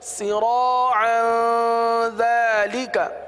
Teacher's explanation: یہاں تنوین کے بعد دال، دال حروف اخفاء میں سے، لہذا اخفاء کا قاعدہ ہوگا